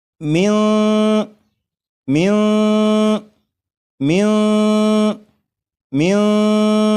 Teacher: آپ غور کریں کہ یہاں پر ایسے معلوم ہو رہا ہے کہ جیسے میم کے بعد جو آواز ہے وہ اوپر کی طرف جا رہی ہے